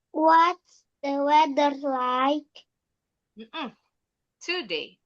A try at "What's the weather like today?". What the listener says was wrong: Oh, intonasinya kenapa jadi naik? What's the weather like today? Sekali lagi.